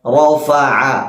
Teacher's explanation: തൊണ്ടയുടെ മധ്യഭാഗം. ഐനും അതുപോലെ തന്നെ ഹാഉം, ഈ 2 അക്ഷരവും തൊണ്ടയുടെ മധ്യഭാഗത്ത് നിന്നാണ് പുറപ്പെടുന്നത്. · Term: ഐനിന്റെ മഖ്റജ്